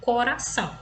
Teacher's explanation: o r entre vogais tá ele vai ter um som fraco